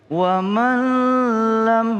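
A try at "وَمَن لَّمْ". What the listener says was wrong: Jangan dilamain. Kalau ketemu dengan lam, jangan wa man lam. Tidak boleh. Langsung dia. Idgham bila gunna.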